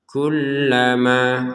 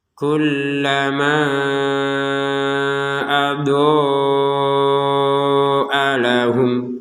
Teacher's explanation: Absarahum kullama, karena nggak kuat nafas misalkan berhenti di sini, maka harokat benderanya ini tidak berfungsi. Jadi yang berfungsi adalah tetap harokat fathah bertemu dengan alif, panjangnya dua harokat.